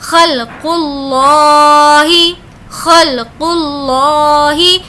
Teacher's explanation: اس قاف کی آواز حلق کے اندر سے آئے گی